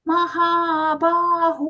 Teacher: In that word, except for ma, all are long sounds.